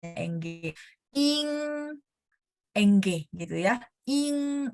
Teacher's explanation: Bunyi sengau lebih kuat, seperti dalam bahasa Indonesia